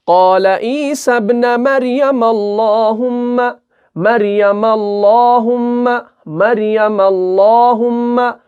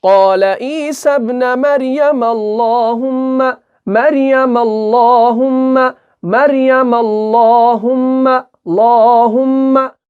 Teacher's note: لا پور پڑھیں گے، منہ بھر کر پڑھیں گے، باریک نہیں پڑھنا ہے بلکہ پور پڑھنا ہے